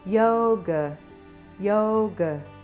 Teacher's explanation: So yoga has a schwa sound in the second syllable.